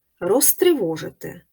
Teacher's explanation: префікс роз перед глухою вимовляється як Рос